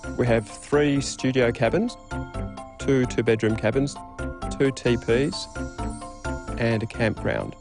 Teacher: a level tone or a low Rising tone can also be used for listing